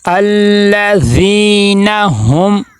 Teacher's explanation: الذین، آگے ہم عن صلاتہم، ہم یہاں پہ دیکھیں میم ساکن ہے، یہاں پہ اظہار شفوی ہو رہا ہے کہ میم ساکن کے بعد میم اور با کے علاوہ حروف میں سے کوئی حرف آ جائے تو وہاں پہ اظہار شفوی ہوتا ہے کہ میم کی آواز کو ناک میں نہیں لے کے جائیں گے بلکہ میم کی آواز ظاہر ہوگی. وہاں پہ جب ہم ادا کریں گے تو آواز رک جائے، بالکل بھی ناک میں آواز نہ جائے.